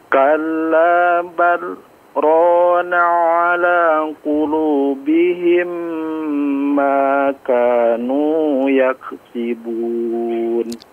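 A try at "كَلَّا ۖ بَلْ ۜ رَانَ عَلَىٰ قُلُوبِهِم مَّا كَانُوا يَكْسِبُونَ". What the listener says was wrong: Yang saktahnya ya, saktahnya enggak perlu buru-buru untuk memulai ya. Kalla bal, santai dulu ya. Tapi memang tidak mengambil nafas ya.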